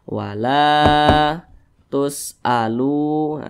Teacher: panjang nah huruf lamnya ini berbaris ke atas atau berharakat fathah Nah maka lam dibaca panjang Mad Thobi'i panjangnya dua harakat atau kira-kira dua ketukan